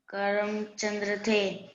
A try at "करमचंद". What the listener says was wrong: चंद्र नहीं है, द के नीचे कुछ मात्रा है क्या? द पर आधा त्र है क्या? फिर से पढ़ो, ये लास्ट वाले दो अक्षरों को एक साथ मिलाकर पढ़ो। हाँ, अब पूरा नाम एक साथ पढ़ो। हाँ, करमचंद।